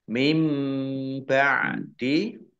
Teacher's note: nun sukun bertemu dengan huruf ba bacaan iqlab dibaca membalik nunnya dibaca mim